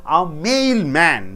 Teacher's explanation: Mail is a noun, man is a noun, right? Which should be stressed? Mail should be stressed.